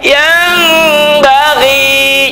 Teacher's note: Yang bunyi M tapi bindeng. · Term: iqlab